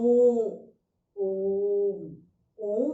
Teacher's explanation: इसमें जो इन स्वरों को बोलते हैं, इनका उच्चारण करते समय 3 गुना ज्यादा समय लगता है। यानी कि हमारे मुख से जब इसका उच्चारण करेंगे हम ओम, तो इसका उच्चारण करते समय तो हर्ष स्वर और दीर्घ स्वर से ज्यादा समय लग जाता है, इसलिए। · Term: प्लुत स्वर